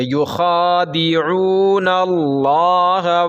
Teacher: تو یہاں کھڑا زبر ہے تو ایک الف کے برابر کھینچ کے پڑھیں گے